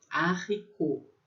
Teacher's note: Esse T é mudo no final